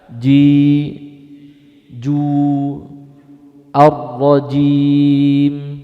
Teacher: huruf jim itu tidak boleh mengeluarkan apa di situ? Desis, yaitu nafas itu.